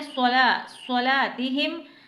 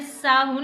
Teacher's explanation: सौद को मैंने सीटी के साथ मोटा करके मुंह को पुर करके, यानी ऐसा लगे कि आपके मुंह में कुछ भरा हुआ है।